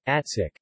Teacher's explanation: k, voiceless, slightly aspirated, plosive. Environment, word final.